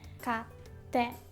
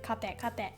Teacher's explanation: You put a little pause between か and て 買って If there is no small つ it sounds like 買て買て and it would mean something different.